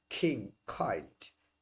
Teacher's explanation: আমরা বলি কে, ওরা বলে খ বা খে, তাহলে একটা হ সাউন্ড আসতেছে। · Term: অ্যাসপিরেটেড সাউন্ড